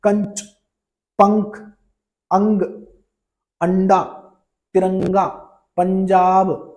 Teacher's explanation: इनमें हवा केवल नाक से निकलती है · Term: अनुस्वार